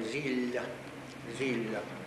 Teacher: І л е подовжене, м'яке, скажімо. зілля